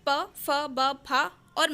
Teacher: पा वर्ग के जो भी वर्ण आते हैं उन सभी का उच्चारण स्थान ओष्ठ होता है, या इसे हम द्वेष्ट भी कह सकते हैं, यानी दोनों ओठों से उच्चारित होने वाले। तो यहाँ पे जो पा वर्ग के शब्द हैं या वर्ण हैं तो वो व्यंजनों में प, फ, ब, फ और मा आते हैं, ये वर्ण आते हैं।